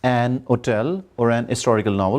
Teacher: Some words begin with H, but this H is not stressed. In such cases, we often see that the native speakers drop it and use an before the word instead of a.